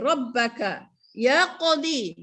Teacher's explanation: Qaf yang mati di situ hukumnya ialah qalqalah surah, maka dia kena lantun sekadar tidak terlalu ditekan. Ya, sekadar lantunannya santai.